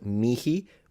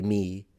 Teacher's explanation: in classical Latin can be pronounced mihi with an actual aspirated H, or you can just say me